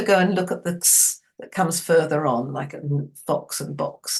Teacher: not one sound, it's two sounds, a k and a s